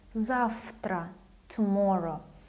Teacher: voiceless T gives this F sound to letter V.